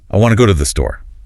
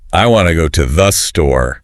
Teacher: The important words are big. Want. Store. The small words are tiny.